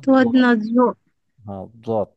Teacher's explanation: এটা হচ্ছে দ একটু মোটা করে।